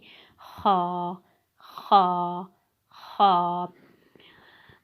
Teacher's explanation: خا کا مخرج میں آپ کو بتاتی چلوں کہ خا جو ہے حلق کے اوپر والے حصے سے ادا ہوتا ہے